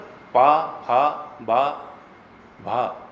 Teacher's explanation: जब तक होष्ठ ओंठ नहीं मिलेंगे पा, फा, बा, भा, इनका उच्चारण ठीक नहीं होगा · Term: पवर्ग